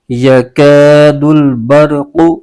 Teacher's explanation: اس کے ہجے یوں کریں گے، یا زبر یا، کاف الف زبر کا، یکا، دال لام پیش دل، یکادل، با را زبر بر، یکاد البر، قاف پیش قو، یکاد البرق۔ قاف یہ حروف مستعلیہ کا حرف ہے، اس کو پر یعنی موٹا کر کے پڑھنا ضروری ہے۔